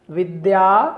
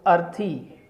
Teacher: जो विद्या का आ है वो दीर्घ है, उसको बोलने में थोड़ा ज़्यादा समय लग रहा है, और अर्थी का जो अ है उसको बोलने में कम समय लग रहा है